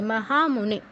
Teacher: মহামুনে, হা নে দুটো দীর্ঘ হবে, মহামুনে।